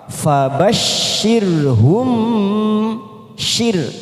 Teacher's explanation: syir kita baca tipis karena ada huruf ro yang didahului kasrah